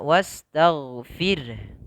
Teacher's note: Ta sifatnya tipis, ghain ditebalkan ya, wastaghfir ya. Gha ya sifatnya yaitu jahar, tertahan nafas, tidak boleh dipantulkan. Wastaghfir ya dengan qalqalah, tidak.